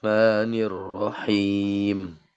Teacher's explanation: Ini mad arid ini sukunnya kita pakai qasar ya, dua harakat saja pendek.